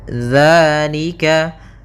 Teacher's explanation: Hati-hati dalam pelafalan zal, jangan dibaca dengan zai, jangan zalika. · adanya fathah bertemu dengan alif. Maka kita panjangkan 2 harakat. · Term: mad tabi'i